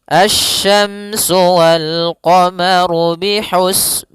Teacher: alif lam syamsiyah yaitu alif lam yang ditulis tapi tidak dibaca sehingga bacaannya langsung ke huruf syin